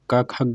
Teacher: ये का वर्ग वाली कंठ से बोली जाती है।